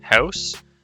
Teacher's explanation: the word house is raised and what that means is that the diphthong makes less of a journey begins higher so it has less of distance to move